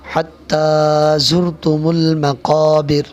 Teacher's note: یہاں بڑا قاف ہے، اس کو ہم حلق سے نکالیں گے